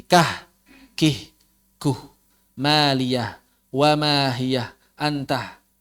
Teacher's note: Jadi orang-orang Arab caranya bagaimana kalau mengucapkan huruf berharokat di akhir? Caranya ditambah hak. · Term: hasakta